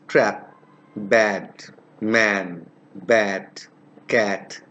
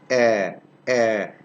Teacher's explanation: This is pronounced with the lips half open and unrounded. Half open. The position of the lips is half open.